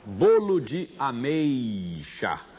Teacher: E na sílaba mei existe um ditongo decrescente. Temos vogal e semivogal.